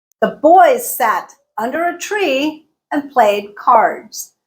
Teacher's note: I emphasize boys sat tree played and cards everything else I smooshed I reduced